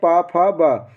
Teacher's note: औष्टम जिनका उच्चारण ओंठों से होता है, जैसे पा फा बा।